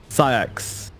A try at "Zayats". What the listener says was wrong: It's not, you don't pronounce the C, by the way. Zayat.